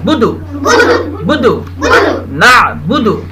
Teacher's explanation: گول, خوب ہونٹ گول کیجیے. بدو, جلدی سے, کھینچنا نہیں ہے. پیش کو زبر زیر پیش کو جلدی پڑھنا ہے.